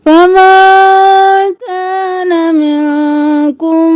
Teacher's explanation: नून पर इख्फा, छुपाना है नाक में आवाज को